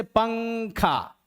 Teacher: तो नून गुन्ना, गुन्ना जो होता है वो आपका नाक से उसकी आवाज़ निकलती है।